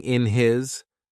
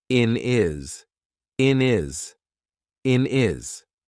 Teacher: So, for example, here instead of saying in his, we're probably going to say in is in is in is. We've taken away that H completely and we've made it into one word.